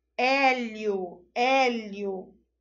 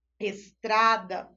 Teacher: O hélio é um oral aberto. O estrada é um oral fechado.